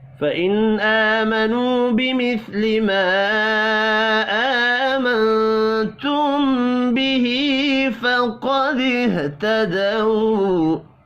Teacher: فَإِنْ آمَنُوا بِمِثْلِ مَا آمَنْتُمْ بِهِ فَقَدِ اهْتَدَوْا، نون ساکن کے بعد حمزہ ہے، اظہار حلقی ہوگا، غنہ نہیں ہوگا، کھڑی زبر اور واو مدہ کو ایک ایک الف کے برابر کھینچ کر پڑھیں گے